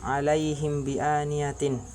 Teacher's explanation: apabila mim sukun bertemu dengan huruf ba, maka cara membacanya samar-samar di bibir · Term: ikhfa syafawi